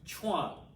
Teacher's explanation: is pronounced like you're saying chew on but fast chuan so you're making chuwan into one syllable